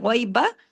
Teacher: تو ساکن عین کی اچھے سے پریکٹس کریں، علم الغیبہ، غی، غین کو ہیوی اور یائلین ہے ، غیبہ، با کو زیادہ کھینچنا نہیں ہے، ایک حرکت ہے،